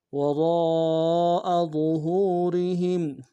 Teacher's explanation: ہا کو میم ساکن کے ساتھ ملانا ہے، میم ساکن مغنہ کریں گے